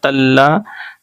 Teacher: تلذی لام پر تشدید ہے، اس لیے اس کو دو بار پڑھیں گے. تا لام زور تل، لام زور لا، تلا.